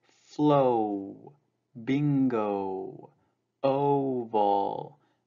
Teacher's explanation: in english o consists of two sounds o and oo is kind of like a movement from o to oo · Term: diphthong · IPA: /ou/ or /oʊ/